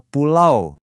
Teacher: Anggap aja ini kayak vokal yang lagi bergerak. Bunyinya itu mulai dari satu vokal, terus langsung meluncur mulus ke vokal lain dalam satu tarikan napas. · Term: diftong